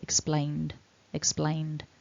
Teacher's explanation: So what we've got is our base form ends in that n, explain, and as a consequence our ed is just a d that we tack on the end, explained, explained, so that needs to be voiced.